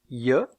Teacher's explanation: Alors, dans le cas de cette semi-consonne, le dos de la langue est relevé et en avant, et les lèvres écartées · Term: semiconsonne palatale, semi-consonne palatale